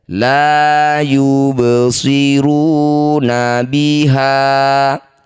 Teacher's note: Ba sukun di tengah bacaan disebut qalqalah sugro. Pantulkan baknya, pantulannya kecil saja.